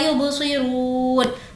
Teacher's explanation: رو کو کھینچیں گے واو مدہ